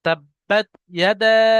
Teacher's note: ইয়াদাটা আমরা বেশি করে টানবো, এটা মধ্যে মুনফাসিল।